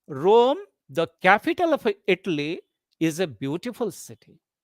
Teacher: here in this sentence, you have three tone groups or three breath groups, or you say three sense groups.